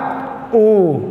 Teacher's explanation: जिसके उच्चारण में ओठों की आकृति जो है वृत्त के समान बनती है वो क्या कहलाता है, वो वृत्ताकार कहलाता है, ठीक है।